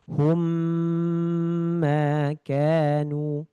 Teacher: Mim sukun bertemu dengan mim ini ditahan dulu sama seperti ikhfa syafawi. Tapi cara bacanya ini tidak boleh furjah. Ini benar-benar itbak dirapatkan. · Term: idgam mimi